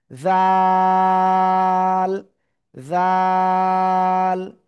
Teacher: জিহ্বার আগা উপরের দুই দাঁতের আগায় লাগাবো, লাগিয়ে নরম করে তিন আলিফ টানিয়ে উচ্চারণ করব